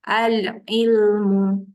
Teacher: alif lam jumpa Ain Ain tengah-tengah kerongkong